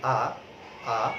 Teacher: আমাদের কেন্দ্রীয় বিবৃত স্বরধ্বনি আ, আ সেটা একেবারে কণ্ঠ থেকে উচ্চারিত হবে। আ, আ যখন আমরা উচ্চারণ করছি কণ্ঠ থেকে উচ্চারিত হবে।